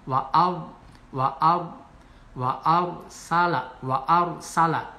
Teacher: sebelum ro mati ini ada huruf fathah, berharokat fathah, dibaca tafkhim atau tebal